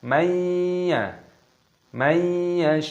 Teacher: nun sukun bertemu dengan ya, idgham bi gunnah dimasukkan dan disertai berdengung. Mayya, mayyasha'u, mad wajib mutasil panjangkan 6 ketukan.